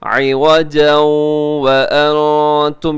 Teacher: عوجا، عوجا، یہاں ادغام بھی ہو رہا ہے، تنوین کے بعد واو ہے، یرملون کا ادغام ہوگا غنے کے ساتھ